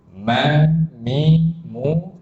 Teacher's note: Ma, mi, mu keluar dari kedua bibir.